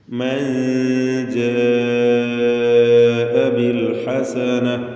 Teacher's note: നൂന് ഉച്ചരിക്കുമ്പോൾ നാവ് മേലെ അതിൻ്റെ മോണയിൽ പൂർണ്ണമായും സ്പർശിക്കാതെ അല്പം നാവിനെ അകറ്റി വെച്ചുകൊണ്ട് ഉച്ചരിക്കുന്ന രീതി, അതിനാണ് ഇഖ്ഫാ എന്ന് പറയും.